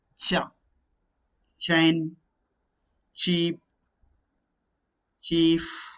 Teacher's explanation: they are not suddenly released okay they are slowly released just like fricatives they release the narrow passage here also they release a narrow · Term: affricates